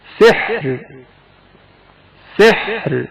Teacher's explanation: سحرا وقف کے وقت ترقیق کے ساتھ پڑھا جائے گا